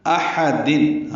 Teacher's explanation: حمزہ اقصی حلق سے، حا وسط حلق سے ادا کریں گے، دونوں کو جلدی پڑھنا ہے.